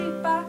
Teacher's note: a neutral tone, which just means you just say it softly, ba. It doesn't really do anything.